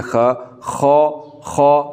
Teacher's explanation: ज़ुबान की जड़ को तालु की तरफ बुलंद करके इन हरफों को पुर करके पढ़ना है